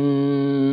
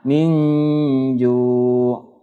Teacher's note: Ya, menyamarkan bunyi nun sukun dengan huruf sesudahnya ya, huruf ikhfa ini. Sehingga dengung atau sengau 2 harokat. Ya, panjangnya 2 harokat atau 2 ketukan. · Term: ikhfa hakiki